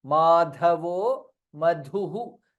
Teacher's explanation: Dha in both the places is Mahaprana.